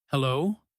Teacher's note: "Hello," she says, and notice how her voice rises a little at the end, because she's unsure who's calling. That small upward movement at the end of a word or a short sentence is one of the most common intonation patterns in English.